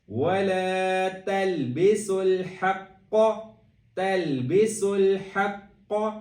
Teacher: سین کی آواز پہ سیٹی دینی ہے